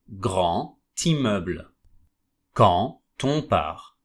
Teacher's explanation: D sounds like a T. The letter D pronunciation changes to T. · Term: liaison